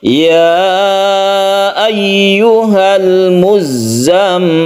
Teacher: Kemudian di sini ada tasydid za yang harus kita tekan ke za-nya, kemudian tasydid mim yang harus kita dengungkan, kita panjangkan. Jadi membacanya itu kita tahan di mim ya. Kemudian mim sendiri itu berkasrah, kemudian sukun lam itu pendek.